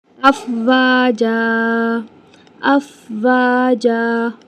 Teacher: واو الف ایک الف کے برابر کھینچیں گے۔ جیم کے اوپر تنوین ہے، جب ہم وقف کرتے ہیں تنوین کو تو اسے ایک الف برابر لے کر آتے ہیں اور کھینچتے ہیں، لائک افواجا، ٹھیک ہے۔